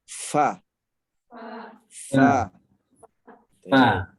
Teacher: Fa makharijul hurufnya Ini nih, dua gigi seri atas nih bertemu bibir bawah bagian dalam sini nih. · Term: huruf fa